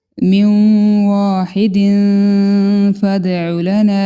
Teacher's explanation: تنوین کے بعد فا ہے، اخفا کریں گے